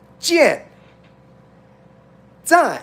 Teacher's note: it's like you're angry it's a fourth tone